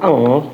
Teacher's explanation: Kalau misalnya kita ngucapin eng ya, eng itu belakang lidah